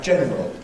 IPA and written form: ˈʤenrəl (general)